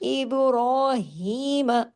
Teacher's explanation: آگے دیکھیے ابراہیم، اب با پہ کلکلا ہوگا، را کھڑی حرکات ہے تو 2 حرکت کھینچے گا، ابرا 2 حرکات، ہا اور ہا را ہیوی بھی ہوگا، را کے اوپر کھڑی زبر ہے 2 حرکات کھینچے گا، ہا باریک ہوگا، را ہیوی اور ہا باریک، اور باریک ہا کھڑی زیر کی وجہ سے 2 حرکات کھینچے گا بھی۔